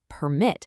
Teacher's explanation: If I just move that emphasis to the second syllable, it becomes permit. Now it's a verb. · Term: stress